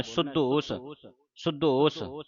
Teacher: ਇਹ ਅਧਕ ਲਾ ਕੇ ਕੱਸ ਕੇ ਬੋਲਣਾ